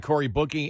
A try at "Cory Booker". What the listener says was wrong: Yeah, you said Bookie. You mean Booker, right?